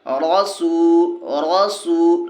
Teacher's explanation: वा मद्दा को एक अलिफ के बराबर खींच के पढ़ेंगे